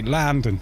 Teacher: someone that lives there would say Landon. Where the O's actually sound more like an A.